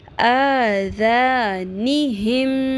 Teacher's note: ہا زیر میم ہم, میم کی آواز کو ناک میں ٹھہرائیں گے, لمبا کریں گے. آذانہم, میم زیر می, آذانہم می, نون زبر صاد نس, صاد کو پر کرنا ہے. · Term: غنہ